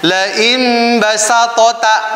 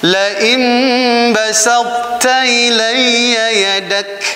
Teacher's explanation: Jadi sifatul isti'lanya itbaqnya dimunculkan, kemudian setelah itu ke ta, ke huruf ta.